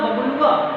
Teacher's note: अब व के बाद का जो उच्चारण है वो प्लुत उच्चारण होगा